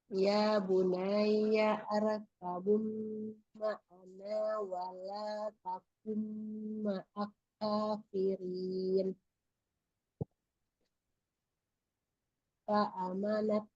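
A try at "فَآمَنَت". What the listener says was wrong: A-nya panjang. Fa'a. Tadi diperhatikan ya di baris ketiga itu ya bunayyam itu bukan harokat dhammah yang di atas alif ya, di atas hamzahnya.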